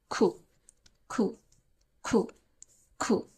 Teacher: ঠিক আছে, এর পরের লেটার হচ্ছে, এটাকে আমরা যেটাকে কিউ বলছি ইংলিশে, এখানে আমরা উচ্চারণটা করব ক আর খ এর মাঝামাঝি একটা উচ্চারণ